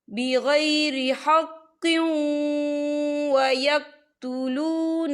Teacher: تو یہاں پر ادغام ہوگا، تو ہم اسے تھوڑا سا غنّے کے ساتھ پڑھیں گے.